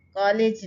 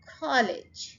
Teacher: College, कॉलेज नहीं, college. First syllable को stress करें हम